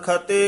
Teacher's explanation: ਖਤੇ ਭੋਲਾ ਹੀ ਉਚਾਰਨ ਕਰਨਾ ਖੱਤੇ ਨਹੀਂ ਕਹਿਣਾ